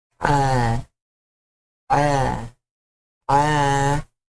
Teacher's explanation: And he add an alif, so I can inform me that I need to put this one having a mad normal, that I can prolong a little bit the 2 counts for this vowel sounds like ah, ah, ah.